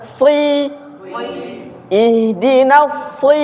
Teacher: Itu huruf shad kasrah. Kalau sin, siapa? Itu sin, tapi ini shad. Ketika kasrah dia tetap tebal, ada isti'lanya.